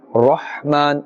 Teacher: Ra must be pronounced with the full mouth because it has a fatha above it